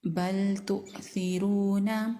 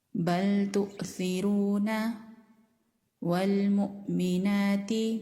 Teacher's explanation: جب ہم حمزہ پر جھٹکا دیتے ہیں تو آواز گلے کے نیچے والے حصے سے آتی ہے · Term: ساکن حمزہ